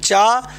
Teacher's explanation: इसका उच्चारण स्थान यह तालू से है